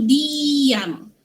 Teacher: Vokal pertama dia kena vokal tinggi. I dengan U. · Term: penyisipan geluncuran